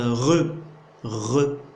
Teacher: C'est justement avec la luyette ou bien l'uvule. C'est pour ça le re, on dit, c'est une consonne vibrante, uvulaire.